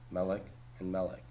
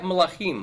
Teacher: Because these vocalic endings of im and oth added to a segulet noun are so strong, they pull the stress to the back.